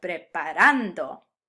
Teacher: pronounce it in default mode with the emphasis on the second to last syllable